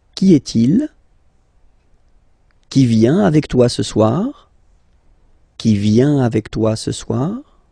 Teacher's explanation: you will have to raise your voice a little bit at the end of the question.